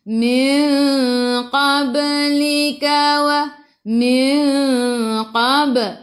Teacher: Bajim dal qafta. Ada baris sukun, kita kena melantun. Lantunannya kecil, namanya qalqalah surah.